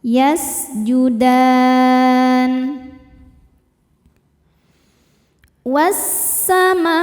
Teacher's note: Ma hukumnya mad wajib muttasil karena mad tabi'i bertemu dengan hamzah dalam satu kata. · Karena mad tabi'i bertemu dengan huruf yang disukunkan karena waqaf. Mad tabi'inya alif didahului fathah, huruf yang disukunkannya nun. Maka dalnya panjang, boleh 2 atau 4 atau 6 harokat, asal konsisten dalam sekali baca. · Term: mad arid li sukun